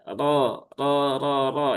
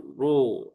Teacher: ro yang berharakat fathah dia dibaca dengan tafhim ya, dengan tebal ya. · ra yang berharokat fathah dia dibaca dengan tafkhim ya, dengan tebal ya. Caranya bagaimana? Ya, caranya dengan menaikkan pangkal lidah. Jadi pangkal lidahnya sini dinaikkan ya, ro, ro ya.